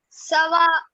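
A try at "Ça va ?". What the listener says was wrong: See, when you ask the question, no, use the rising intonation.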